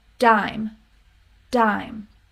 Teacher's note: tongue just stays bat there's a similar thing happening with d even though you don't have a puff of air there is a stronger sound in the beginning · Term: beginning d